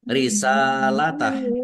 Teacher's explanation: Sin fathah berdiri, mat tobi'i, panjang 2 harokat. Kemudian haknya dibaca sukun, dibaca karena wakop.